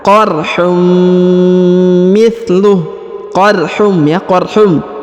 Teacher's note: Huruf unnya melebur masuk ke huruf mim dan seakan-akan menyebut huruf mim